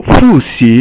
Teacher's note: Then Fu is fourth tone, Xi is second tone